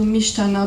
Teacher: Mishana, which turns into mishtana because they don't like the t before the sh sound, so they invert it, they have a sh before t